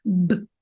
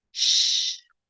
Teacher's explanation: Un son peut être occlusif, donc bref ou court comme b, ou fricatif, soit continu ou prolongé comme ch.